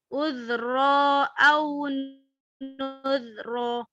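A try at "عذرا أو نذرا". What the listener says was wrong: Ini tanwin saya. Uzron, ron.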